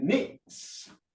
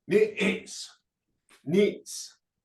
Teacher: After the ni, there is a very distinct glottal stop.